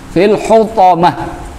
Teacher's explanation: jika diwaqaf, maka cara membaca ta marbutah itu sama seperti membaca huruf H